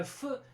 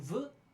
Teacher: Voiceless and voiced. These are fricatives.